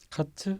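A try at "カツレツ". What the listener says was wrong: 자, 커틀렛을 커트레트. 근데 트 발음이 없잖아요. 일본은. 치가 됩니다. 커츠레츠. 근데 어도 발음 잘 안 하죠. 카츠레츠. 카츠레츠.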